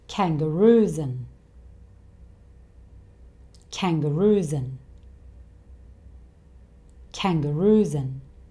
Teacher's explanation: He changes and to an. So he changes the a sound to the schwa sound, and he doesn't say the d sound at all. So and becomes n. · So when spoken, these two words tend to be joined together to make one long word. So this becomes kangaroos and.